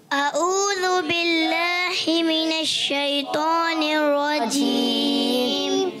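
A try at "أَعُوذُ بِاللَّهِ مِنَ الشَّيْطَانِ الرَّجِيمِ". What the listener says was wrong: ही हो गया, अऊज़ु बिल्लाहि, हा अदा करना है, ही करेंगे तो गलत हो जाएगा।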